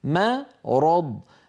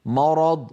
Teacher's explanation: كما نبه عليها الجزري رحمه الله مثلا في قلوبهم مرض مرض الميم مرققه والراء والضاد مفخمتان فلا يصح ان يقول القائل مرض فيفخم الميم تبعا للراء والضاد